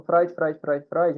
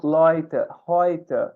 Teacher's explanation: o fonema EU em alemão, ele tem esse som de OI mesmo